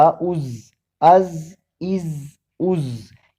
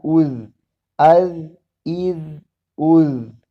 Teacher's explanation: اس ذال کو زا سے مختلف پڑھنا ہے. زا میں سیٹی کی آواز آتی ہے جبکہ اس ذال میں نہیں آتی